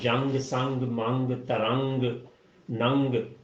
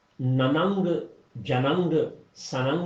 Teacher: تو نون کو ناک میں چھپا لینا ہے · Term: نرم غنہ